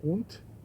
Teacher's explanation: Und, o T no final, und, apesar de estar escrito D, se pronuncia T.